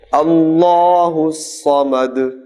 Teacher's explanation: الصمد دال پر پیش ہے، جب وقف کریں گے تو پیش کو ساکن کر دیں گے. اللہ الصمد لم یلد ولم یولد.